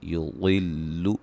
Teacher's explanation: ضاد کو موٹا ادا کریں گے